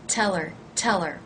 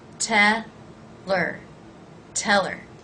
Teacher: if you drop the H you have to be certain that you link it to the word before tell her tell her it's almost like it becomes one word